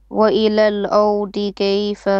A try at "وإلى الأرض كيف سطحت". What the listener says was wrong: is flat, ra is heavy. وإلى الأرض. not D. Dad is heavy. أرض. أرض.